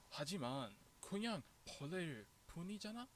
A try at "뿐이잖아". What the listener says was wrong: Once again, 분, not just pun. Like you need. That's one thing to practice is tense consonants. 벌레일 뿐이잖아. So 분 needs to be tensed. Like all tense consonants. One thing to seriously practice because it's important.